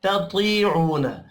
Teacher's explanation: ता को बारीक पढ़ेंगे, तो को पुर पढ़ना है। वाव मद्दा है, एक अलिफ के बराबर खींच कर पढ़ेंगे।